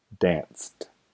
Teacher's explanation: no hay vibración en las cuerdas vocales con estos sonidos Entonces se pronuncia el verbo con el sonido t en la terminación · en una letra c e pero el sonido es s y el sonido s es sordo entonces danced